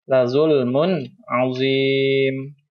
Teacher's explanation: Di sini ada tanwin bertemu dengan huruf ain, maka hukumnya izhar halqi, dibacanya jelas.